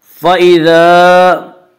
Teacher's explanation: فَإِذَا الف مدہ، الف ہمیشہ مدہ ہوتا ہے، الف سے پہلے زبر ہوتا ہے، الف مدہ کو ایک الف کے برابر کھینچ کر پڑھیں گے